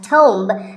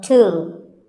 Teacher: It's often wrongly pronounced as tomb, but the B is silent and the O is pronounced with an oo sound. So, tomb.